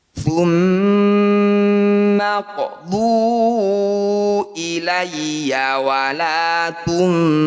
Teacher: Disebut bacaan mad jaiz munfasil. Cara bacanya dhu atau huruf yang bertanda layar kita panjangkan 5 harokat atau 5 ketukan.